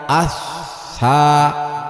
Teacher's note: সা বলতে যেমন, ৪ নম্বর মাখরাজ, জিহ্বার আগা সামনের উপরের ২ দাঁতের আগার সাথে লাগাইয়া আস সা উচ্চারিত হয়। সা পড়তে লম্বা টান হবে না, অল্প টান ছাড়ব না।